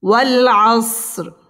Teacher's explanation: ওয়াল আসর, র এখানে পুর করে পড়তে হবে।